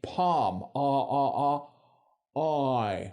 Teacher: So the Australian diff thong starts at the back of the mouth.